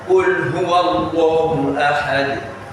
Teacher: Qul, you see how you articulate them, there's a vibration in your vocal cord and there isn't as much release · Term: al-jahar